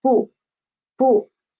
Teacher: it is a neutral tone. So we should pronounce it soft and quick. So it is 不.